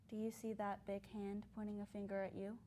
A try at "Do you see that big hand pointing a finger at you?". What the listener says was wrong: There's something weird. It sounds weird to me. I think you're putting too much emphasis on you. And then you're rushing the second half of the sentence. So get us to visualize it.